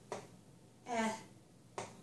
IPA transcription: ɛ